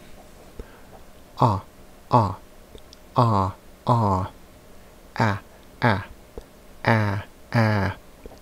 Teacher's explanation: Notice that the quality does not change. The long version is the same as the short version, held longer.